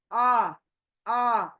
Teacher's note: हमजा सीने के अंदर से